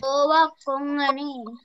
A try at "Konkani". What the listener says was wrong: Konkani. Don't say Kongani. No.